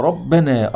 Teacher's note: ربنا الراء مفتوحه فيها التفخيم